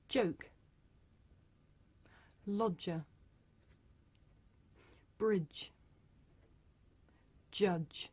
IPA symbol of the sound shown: dʒ